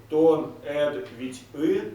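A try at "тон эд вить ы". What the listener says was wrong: Вити мягче произносим как единое. То над Вити.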